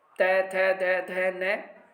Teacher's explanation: इनको पढ़ते समय जीभ का अग्रभाग दांत को स्पर्श करता है, इसलिए त वर्ग दंत्य ध्वनि है।